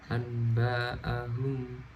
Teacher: mengganti bunyi nun sukun atau tanwin menjadi bunyi mim ketika bertemu ba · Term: iklab